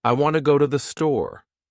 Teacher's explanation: In this sentence, want and store are stressed and the other words are said quickly and softly. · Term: Sentence stress